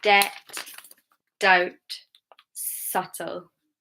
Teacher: Okay, subtle. No B sound. B is silent.